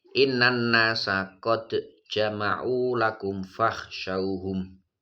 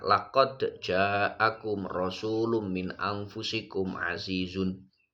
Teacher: Pada kalimat qad jama'u ini harus dibaca qalqalah, tidak boleh dibaca idgham.